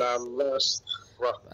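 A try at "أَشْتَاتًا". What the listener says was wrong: Panjang sikit lah pada ta tu. Kat ta ni panjang sikit. Ashtatan ta hukumnya adalah mat asli 2 harakat kat situ.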